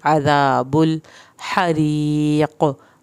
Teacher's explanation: हा को हल्क से पढ़ के री या साकिन की वजह से हमने री इसको लंबा करके पढ़ना है। हरीक़, क़ाफ पे कलकला होगा।